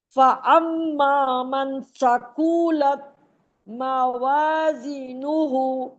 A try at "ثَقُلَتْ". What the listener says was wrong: ثقولت نہیں، کھینچنا نہیں، ثقولت.